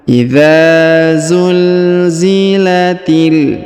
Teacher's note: huruf ti langsung sambung masuk ke huruf lam yang berharokat sukun ini ya. Jika terdapat alif lam seperti ini, maka huruf ti yang ini atau huruf seperti ini yang di ujung ini langsung sambung ke sini ya.